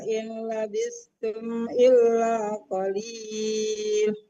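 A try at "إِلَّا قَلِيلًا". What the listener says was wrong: Qalila bukan qalil tadi saya sempat di awal tersinggung semua memang betul kalau wakaf itu jadi hilang semua harakatnya di akhir kecuali fathatain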